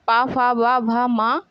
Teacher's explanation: ये सभी वर्ण आपके होष्ठ से बोले जाते हैं।